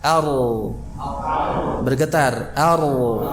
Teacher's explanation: getarannya itu tersembunyi, tidak seperti kita mengucapkan R. Ya kalau R itu kan jelas ya.